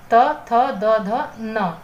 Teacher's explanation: तावर में आपका दंत्य, दंत का प्रयोग होता है जीभ के ऊपर के दांतों पर लगने से यह आपके उच्चारण होते हैं